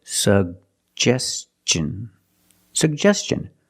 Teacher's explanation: And T-I-O-N, the T makes the ch sound.